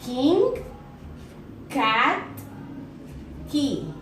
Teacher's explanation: According to voicing, is voiced. Place of articulation is velar. Manner of articulation is plosive.